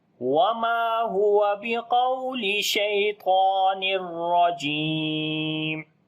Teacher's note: تنوین کے بعد را آگیا، ادغام بغیر غننے کے کریں گے تو را کے اوپر زبر ہے، موٹا بھی پڑھیں گے، جیم